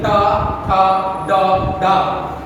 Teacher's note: अपने आप जीवा ऊपर मुड़ के स्पर्श करती है। आप देखिए ट अपने आप आपको मुड़ने की जरूरत नहीं है, ट ठ ड ड।